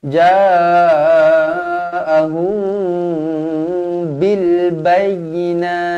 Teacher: mim kosong bertemu dengan ba Ikhfa Syafawi dibaca dengung dua harakat